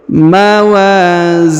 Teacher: huruf Zi dibaca panjang dua harakat karena di depannya terdapat Ya Sukun